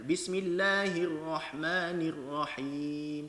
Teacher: Nir. Dia ni NIR kemudian RA. Kena nipiskan. Kemudian baru masuk ra yang tebal.